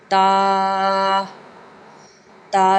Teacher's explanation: زبان کی نوک اوپر کے دانتوں کی جڑ سے لگا کر سختی سے ادا ہوتا ہے